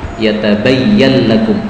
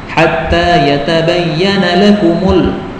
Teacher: nunnya diidghamkan pada lam